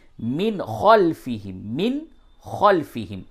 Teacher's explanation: نون اور تنوین کی آواز کو بالکل ظاہر کر کے پڑھتے ہیں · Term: اظہار